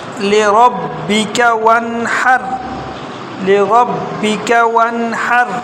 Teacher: را موٹا، با یہ کاف باریک اور ہا جو ہے نا یہ بھی باریک ہے